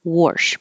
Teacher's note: There can be an intrusive R, wash, but that's not general American dialect.